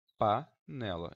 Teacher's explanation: Então esse A está livre, não tem nenhuma interferência nasal.